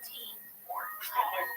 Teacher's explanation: There's an extra burst of air when you say tea, but not when you say steam. That puff of air is called aspiration.